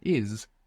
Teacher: English speakers should beware that maybe they feel themselves pronouncing a Z, because many times we have an S in English, like in the word is, and we pronounce a Z